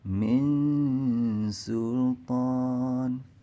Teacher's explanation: jadi makhraj di mulut kita itu sudah ancang-ancang ke huruf sin. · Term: ikhfa hakiki